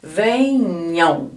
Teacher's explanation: esse M aqui ó a gente fala também com som de vogal então isso aqui também é um ditongo uma vogal e a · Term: ditongo nasal